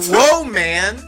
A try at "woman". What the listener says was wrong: No, you're saying whoa, man. You're saying whoa, man.